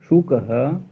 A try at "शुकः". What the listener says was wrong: सुकहा हो जा रहा है, सुकहा मत करिए, शुकह।